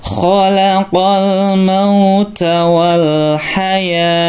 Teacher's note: Taknya karena di tempat pemberhentian maka dibaca seperti hak sukun.